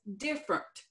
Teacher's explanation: Different has 3 syllables, but we in Texas drop that middle syllable, and we sometimes transpose some letters.